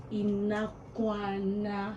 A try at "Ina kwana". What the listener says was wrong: Say it together, mix the words together. Ina kwana.